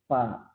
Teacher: kalau huruf fa itu dari safa tain, 2 bibir ya.